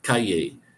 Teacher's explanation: Um, Street is C-A-L-L-E, calle. You don't say the L's, it sounded like a Y.